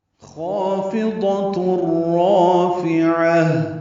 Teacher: دو حرکات لمبا کریں گے اور اس خا کو اور الف دونوں کو پر پڑھیں گے، فا کو باریک اور جلدی پڑھیں گے معروف طریقے سے، ضاد کو پر پڑھیں گے۔ · ضاد کو پر پڑھیں گے۔ اس کی صفت بھی مستعلیہ کی ہے، موٹا پڑھیں گے، اور اس کی ایک صفت اطباق کی ہے، حروف مطبقہ میں سے ہے، اور اس میں زبان کا اکثر حصہ تالو سے ملصق ہو جاتا ہے، یعنی لپٹ جاتا ہے یا چمٹ جاتا ہے۔